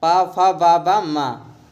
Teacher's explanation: ओष्ठ में आते हैं पा वर्ग